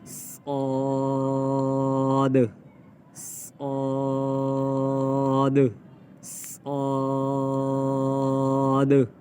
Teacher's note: صاد، اس کو موٹا بھی پڑھیں گے، صاد نہیں پڑھیں گے، موٹا کر کے سیٹی کی آواز بھی نکالیں گے۔ صاد صاد صاد۔